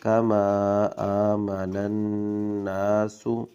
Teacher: نون مشدد غنہ کریں گے